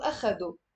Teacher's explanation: We don't say do, أخدوا. Oh, and that O sound is very specific to the Lebanese dialect